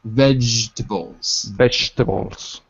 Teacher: notice how we drop the second syllable